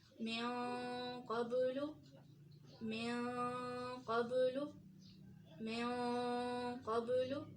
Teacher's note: اب اس مثال میں دیکھیں نون ساکن کے بعد قوف ہے، قوف بھاری حروف میں سے بھی ہے اور حروف اخفا میں سے بھی ہے، تو اس کو کیسے پڑھیں گے، نون کی آواز کو زیادہ چھپائیں گے